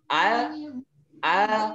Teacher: Jadi huruf lam itu dia di ujung lidah ketemu ujung gusi dalam. Tapi tidak terlalu ke dalam. Kalau terlalu ke dalam itu akan membuat huruf lam lebih tebal bunyinya.